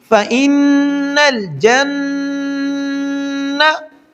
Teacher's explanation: جیم اور نون کو سختی سے ملائیں گے اور نون پر غنہ کریں گے۔ فَإِنَّ الْجَنَّةَ جنہ، تا کے اوپر زبر ہے تو اس کی آواز ہوگی تا۔